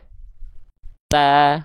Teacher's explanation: Satu lagi saya lupa ngingetin, ketika teman-teman melafalkan huruf ta, kan dia nempel nih. Nah, ketika dia ujung lidahnya terlepas dari pangkal gigi sari atas, di saat melepas itu keluar percikan nafas